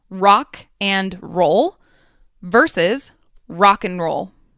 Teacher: The initial a sound and the final d sound completely disappear, leaving only the n sound. This happens all the time whenever you aren't emphasizing the and in a phrase. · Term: elision